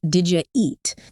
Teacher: Again, you might be expecting to hear did you eat with little pauses, but most times it'll sound like did you eat? That did and you, they just merge together. They do. And it's interesting because if you're listening for that did and then the you and you hear did ya, it's like you missed a whole word. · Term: connected speech